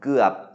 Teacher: guap, which is a low tone because of the stop final